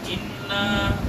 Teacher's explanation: انا تھوڑا سے اوپر آواز دے گی, ناک سے آواز نکلے گی